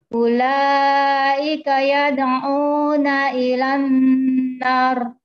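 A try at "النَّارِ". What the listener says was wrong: Nar tipis itu Bu, ro-nya harus tebal. Ilan nar.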